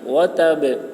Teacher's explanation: وتب یہ با میں قلقلہ ہوگا، کیونکہ وقف کرنے کی صورت میں با میں جزم آ رہا ہے اور با حروف قلقلہ میں سے ہے، اس وجہ سے با میں قلقلہ ہوگا.